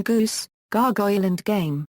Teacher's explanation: Alone, it represents a voiced velar plosive, as in goose, gargoyle and game.